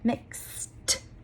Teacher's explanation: I'm just blowing out air. I didn't actually make any sound in my vocal cords.